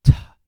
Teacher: Now, strictly speaking, it was probably, or it really would not have been pronounced as a th, but as a T with a puff of air following it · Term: theta